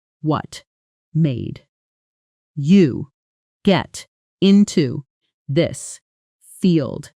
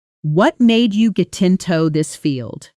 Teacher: native speakers compress it dramatically. What and made blend, you softens